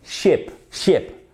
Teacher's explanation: Ship, c'est différent de sheep. Voyez, j'ai relâché ma langue. C'est un son dit laxe, c'est-à-dire plus détendu.